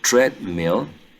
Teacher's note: the initial sound is an alveolar consonant sound its plosive and voiceless